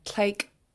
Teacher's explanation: it's a pinched K at the end. It's not rounded. You don't have any pinched TL, but it's a pinched K at the end.